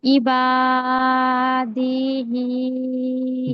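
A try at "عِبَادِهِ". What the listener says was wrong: দি, দালটা একটু টান হয়ে গিয়েছে, দাল টান হবে না, খেয়াল করে পড়বেন। ইবাদিহি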